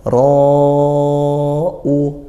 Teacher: Yuro, ro-nya fathah, dibaca tafkhim, kemudian bertemu hamzah ro-u. Nah, ro panjangnya 2 alif atau 4 harokat, hukumnya mad wajib muttasil karena bertemu hamzah, hamzahnya di satu kalimat, di satu kata, seperti itu.